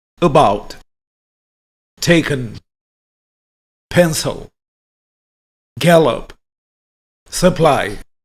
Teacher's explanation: Schwa, a quick, relaxed, neutral vowel. This neutral vowel sound is found in unstressed syllables. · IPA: /ə/